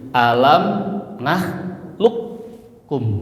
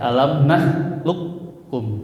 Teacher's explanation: Jadi qof-nya melebur ke huruf kaf. Jadi idgam itu melebur masuk ke huruf di depannya. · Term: idgham